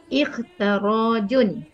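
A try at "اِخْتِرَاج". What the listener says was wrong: Ikhti bukan ikhta.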